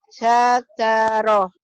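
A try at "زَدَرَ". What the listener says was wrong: Bukan sa, tapi za. Zadaro. Za. Zadaro.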